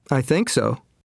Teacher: Notice the stress on the verb in short answers with so. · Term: Sentence stress